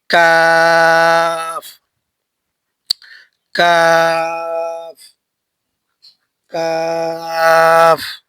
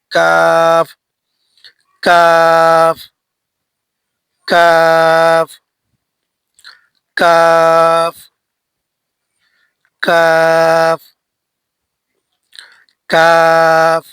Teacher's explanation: জিহ্বার গুড়া থেকে একটু আগে বাড়িয়ে তার বরাবর উপরে তালুর সঙ্গে লাগিয়ে উচ্চারিত হয় কাফ